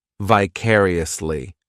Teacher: The third syllable, it's like that letter I just has that E sound, and the fourth syllable has the schwa